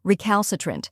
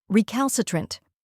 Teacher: First, we have re, which sounds like the rye in river. Next is cal, which rhymes with pal and is stressed. Then comes sa, which sounds like sa in sofa.